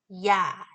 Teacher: 있지만 우리가 청각적으로 듣는 부분은 바로요 뒷부분을 주로 듣습니다 자 그래서 이 이중 모음은 일단 반 모음과 아 단모음으로 이루어져 있다입니다